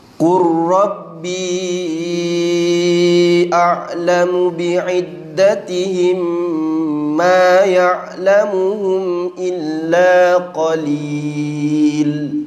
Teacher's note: Apa-apa huruf kalau dia mati dengan ra, ra tu bersabdu, maka sifat dia jadi tebal. Qur rabbi, jangan qur, jangan ada takrir.